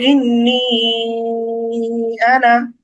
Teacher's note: যেহেতু মাদের হরফের পরে হামজা হয়েছে, সুতরাং এই এক আলিফ মাদটাকে আমাদের এখন তিন আলিফ টানতে হবে। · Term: মাদ্দে মুনফাসিল